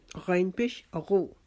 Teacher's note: جب غین ادا کریں گے تو جو ہمارا حلق کا اوپر والا حصہ ہے ادھر سے ہماری آواز آئے گی، جیسے ہم غرارہ کرنے کے لیے اپنے گلے سے آواز نکالتے ہیں خ خ، تو یہ غین کی آواز ہونی چاہیے.